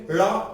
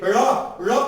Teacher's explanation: अब इस ड़ा को बोलना है, जब आप लड़ा को बोलेंगे तो ड़ा में जीभ ऊपर जाएगी, मूर्धा पे बोलिए ड़ा। जब आप ड़ा बोलेंगे ऊपर जाने के बाद जीभ नीचे से खटक जैसे गिरेगी। देखिए बोलिए सर आप, मैडम आप बोलिए ड़ा ऊपर जाएगी और धड़ाम जैसे गिर जाएगी। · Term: उत्क्षेपित व्यंजन